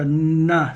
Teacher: the end sound is the tip of your tongue in the front of your mouth on the top of your roof on the front top of your the roof of your mouth